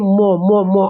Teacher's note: मो मो मो बोलिएगा तो नाक पे जोर पड़ता है